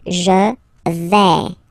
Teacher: when you combine this A-I, you get the sound A, really open